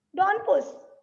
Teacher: and डोंट में टी pronounce नहीं होगा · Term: इलेशन